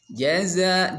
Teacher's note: Kalau jim itu makhrajnya ada di wastul lisan, tengah-tengah lidah. Kalau za adanya di ujung lidah.